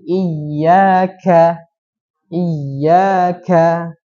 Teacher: khofi dan yang samar yang pertama Menghilangkan sifat huruf k apa sifatnya Hames ya atau ada nafas yang keluar jadi bacanya ka bukan ka jadi iyaka iyaka itu ya iyaka